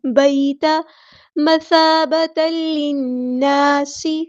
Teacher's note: سا کو باریک نرمی سے ادا کرنا ہے